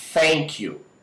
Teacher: A palavra thank you, você pode notar que ela não vai existir vibração nenhuma. Né? Se você colocar a mão aqui, você vai ver que as suas cordas vocais não vão vibrar.